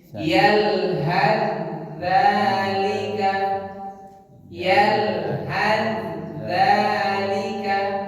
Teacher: Jadi kalau dia dibaca wasol, ini langsung ke huruf dal, huruf ta-nya hilang. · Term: idgham mutajanisai